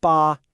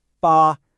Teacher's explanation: It's pronounced ba and again with a high flat tone.